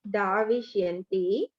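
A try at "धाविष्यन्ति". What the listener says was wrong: Dakara should be Mahaprana. You are pronouncing Alpa Prana.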